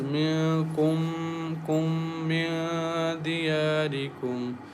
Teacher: There is a meme sakin is followed by meme, so we merge first meme into the next meme and recite with nasal sound as minkum kum min diyarikum.